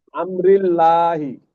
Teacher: আল্লাহ শব্দের ডান দিকে জের এসছে, তাই আল্লাহ শব্দ লামকে বারিক করে পড়তে হবে।